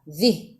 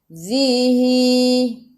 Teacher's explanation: Hadhi ha dua harakat ada alif kecil mad asli. Zih za zi hujung lidah keluar pada gigi depan, matikan dengan ha